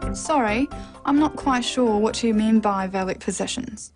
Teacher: The final example is a statement, so a falling tone is used.